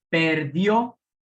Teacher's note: Perdió, sílaba tónica en la última sílaba, por lo tanto es aguda.